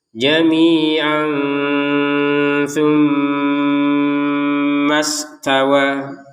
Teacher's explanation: Kemudian kalau kita jambung dengan yang setelahnya, ternyata setelahnya ada huruf tssa maka kita baca dengan samar jamian tumma ini samar. Kemudian mim bertasydid kita dengungkan.